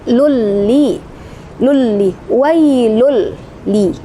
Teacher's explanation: Nah, itu dinamakan idgham bila gunnah karena ada tanwin atau dhammah sukun ya pada huruf lam bertemu dengan huruf la, berarti dibaca tidak dengung ya